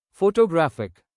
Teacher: Photographic stress shifts to third syllable. So even though the base word is the same, stress changes with the added suffix. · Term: shift in stress